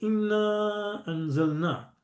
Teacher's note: the long vowel na has been followed by a hamza. So this brings about a mad, a prolongation.